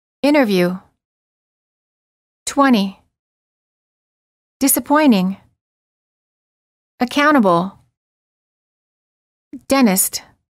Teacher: The T after an N or an N sound is often silent. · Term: T after N